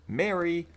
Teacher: This vowel is a rhotic mid-front vowel, despite some misapproximations.